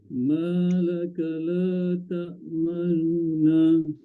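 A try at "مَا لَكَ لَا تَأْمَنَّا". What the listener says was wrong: Terlebih jelas pula. Terlebih nu tu macam dah terang bunyinya. Dia macam perlahan. Sorok sikit. Nu tu.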